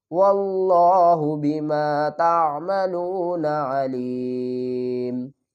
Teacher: دو پیش کو بھی ڈراپ کر دیں گے، میم کو ساکن کر دیں گے